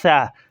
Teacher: دانتوں کے درمیان دیا تو یہ لفظ نکل آئے گا ثا